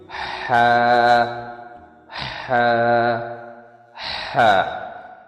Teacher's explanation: ہا، ہا حروف حلقی میں سے آتے ہیں۔ ہا کو حروف حلق کے بیچ والے حصے سے نکالنا ہے۔ جو حلق کا جو درمیانی حصہ ہے اس سے ہم ہا کو نکالیں گے۔